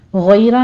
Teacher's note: غیرہ میں غین بھی پر پڑھا جائے گا اور اس کے بعد یا لین ہے، پھر آگے را بھی مفخم پڑھی جائے گی